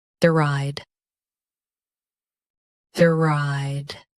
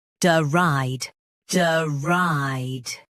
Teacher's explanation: US DR starts tighter. UK duh adds a soft first beat.